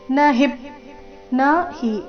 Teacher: ನ ಹಿ ಎರಡು ಅಕ್ಷರ ರಸ್ವ ಹಿ ಮೇಲೆ ಆಘಾತ.